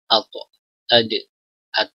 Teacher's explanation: huruf ta, dal, dan ta ini makhrajnya sama, ujung lidah dan pangkal gigi seri atas, ya, atau langit-langit mulut yang paling dekat dengan gigi, ya.